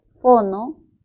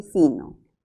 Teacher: la O es una vocal posterior y la I es una vocal anterior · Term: vocal media